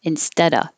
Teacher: I'm not really going to say the v and of.